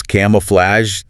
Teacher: That a is open. Ah, and the G is soft like J. Flatch. Not a hard G.